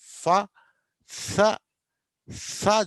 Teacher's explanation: కానీ ఫ్రికటివ్స్లో ఏమవుతాం అంటే గాలి పూర్తిగా ఆపము, గాలి కొద్ది కొద్దిగా బయటకు వస్తూ ఉంటుంది అన్నట్టు, సన్నగా.